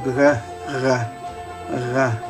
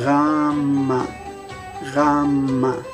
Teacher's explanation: instead of making a stop release, g, you're going to hold your tongue there and continue that sound, vibrating the g. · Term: fricative